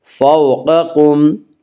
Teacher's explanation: قاف کو پر پڑھیں گے، قاف حروف مستعلیہ میں سے ہے۔